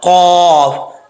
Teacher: قاف حروف مستعلیہ میں سے ہے, اس کو پر پڑھیں گے. اور اس قاف کا مخرج ہے دو نقطوں والا جو قاف ہے, اس کا مخرج ہے زبان کی جڑ اوپر والے تالو کے نرم حصے سے لگے تو قاف پڑھا جاتا ہے, قاف.